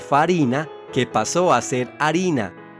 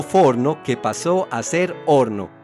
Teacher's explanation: la desaparición de la F latina al inicio de una palabra, es decir, la supresión de este sonido, como en el caso de farina, que pasó a ser harina, o forno, que pasó a ser horno, entre muchos otros casos.